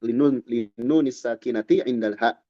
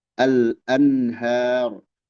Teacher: Nun sukun menghadapi ha. Al-anhar, an dibaca jelas. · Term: idhar halqi